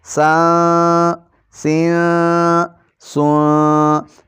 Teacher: سا 2 زبر سان، سا 2 زیر سین، سا 2 پیش سون، سان سین سون۔ یہاں پر آپ نے سیٹی کی آواز بالکل نہیں نکالنی، نرمی کے ساتھ ادا کرنا ہے۔ زبان کی نوک سامنے والے دونوں دانتوں کے اندرونی کناروں سے لگے گی۔ یہ حرف بھی اسی طرح ہی ادا کرنا ہے۔